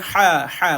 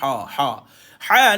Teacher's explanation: dan lepaskan la ha dipedaskan ha ha bukan Ha ha ha ni dia nipis dan dia pedas dia duduk di tengah kerongkong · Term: ha pedas